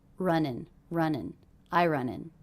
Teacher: those two words are really linked together because we have an ending consonant and a beginning vowel